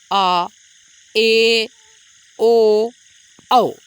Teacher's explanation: अर्धविवृत्त स्वर आपका ऐसा स्वर है जिसके उच्चारण के समय आपका मुख जो है विवृत्त स्वर से थोड़ा सा कम खुलता है और संवृत्त एवं अर्धसंवृत्त से अधिक खुलता है।